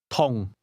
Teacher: Did you hear the mid-falling tone?